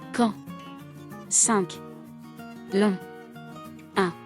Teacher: vocales nasales, que se pronuncian no solo por la boca, sino también por la nariz